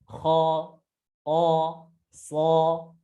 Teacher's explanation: suaranya yang dengan menaikkan pangkal pangkal lidah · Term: huruf-huruf yang tebal